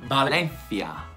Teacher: il suono della C in questa parola è lo stesso suono del TH sordo, quindi come in think, identico.